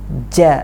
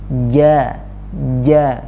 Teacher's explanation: jimnya diusahakan untuk tidak mengeluarkan hembusan angin yang terlalu banyak